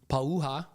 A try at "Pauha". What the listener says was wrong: Pauha. There's a ha in there. Pauha. Yeah. That's exactly right.